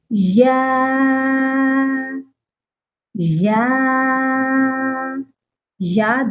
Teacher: یا 2 حرفی ہے اور 1 الف کے برابر لمبا کر کے پڑھا جاتا ہے